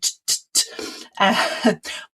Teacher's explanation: my vocal cords actually aren't engaged. They're not vibrating. So that's an unvoiced sound.